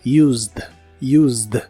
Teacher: this chair puedo usar esta silla en el pasado es Used no se pronuncia la e de esta palabra solo la d del final